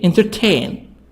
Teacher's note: The stress on tain.